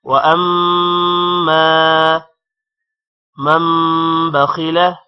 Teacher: مم غنہ ہوگا، با کی وجہ سے غنہ ہوگا، اور میم 2 زبر ہے اس وجہ سے مم پڑھا جائے گا.